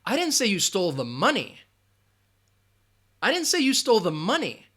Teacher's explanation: you can hear that emphasis on money and that's what the meaning is